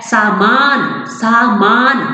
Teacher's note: सामान में माँ जो है हमारा इस अक्षर पर बल पड़ रहा है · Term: शब्द बलाघात